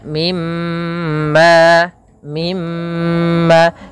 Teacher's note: huruf mim dan huruf nun yang bertasdid gunah yaitu menahan maka mimma mimma tidak langsung dilepaskan mimma tapi ditahan dahulu Mim